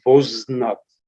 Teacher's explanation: So first, vanznat became vonznat, but then because we have here consonant cluster, vonznat becomes voznat. So n drops, but before getting lost, it influenced on a, making it o.